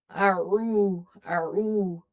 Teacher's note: A'udhu. Ain is from the halkiya letters. Okay, it's from the middle of the throat. A bit squeezing sound. And you have to train your muscles in the throat in order to pronounce it clearly. · We stretch up to one alif because waw is madda here.